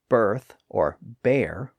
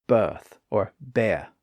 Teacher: whereas an American might say birth or bear with a distinct R sound someone in England might say birth or bear without that sound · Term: rless pronunciation